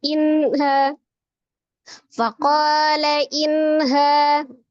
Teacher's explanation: La inha nun sukun bertemu dengan huruf ha. Ha adalah salah satu huruf al-halqi atau dari tenggorokan, tepatnya tenggorokan bawah ya. · Jadi dibaca dengan jelas tetapi tidak boleh meninggalkan sifat huruf nunnya yang ada gunnahnya, kemudian ada tawassutnya ya. Jadi walaupun dia dibaca dengan jelas tapi nunnya harus tetap ditawassutkan atau dialirkan sebagian. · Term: izhar halki